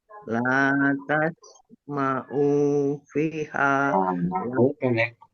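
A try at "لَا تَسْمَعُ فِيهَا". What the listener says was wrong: Ma'ufi. Pendek. Ma'ufi. Gitu ya.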